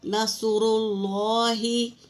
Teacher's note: اور را کے نیچے دیکھو زیر ہے تو اس کو باریک پڑھیں گے، رحلت۔ اور را کے اوپر پیش ہے تو پر پڑھیں گے، نصر اللہ۔ اس طرح زبر اور پیش کو پر پڑھیں گے اور زیر کو باریک پڑھیں گے۔